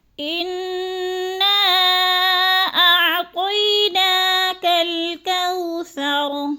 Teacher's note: انا کی نون مشدد ہے، سختی سے جماؤں کے ساتھ ہم نے غنہ کرنا ہے